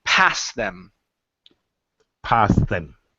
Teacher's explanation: Now, what you don't want to do is stop in between. So yes, the T is going to disappear. Okay, because we have a consonant, a T, then another consonant. So that T is gone. So it's past them. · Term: The T disappears